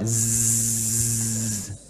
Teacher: Kalau zai agak tutup lebih rapat